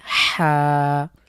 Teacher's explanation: হা কন্ঠের মাঝখান থেকে চাপ দিয়ে